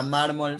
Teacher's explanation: La palabra mármol sería una palabra grave porque lleva el acento en la penúltima sílaba